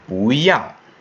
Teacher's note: So the 不 becomes a 2nd tone.